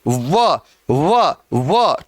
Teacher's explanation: होठ भी मिल रहे हैं और जीभ दांतों को भी स्पर्श कर रही है, इसलिए क्या कहते हैं इसको, दंतोष्ठ।